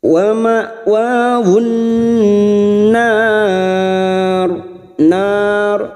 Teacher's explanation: huruf ro ini kita baca tafkim Karena Mati dibaca wakaf dan didahului fathah